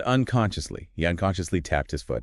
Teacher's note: Unconsciously stress on the second syllable.